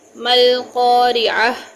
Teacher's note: اور اس گول تے کو جب وقف کرتے ہیں تو ہے میں یعنی ہا میں بدل دیتے ہیں، گول تا کو ہا میں بدل دیں گے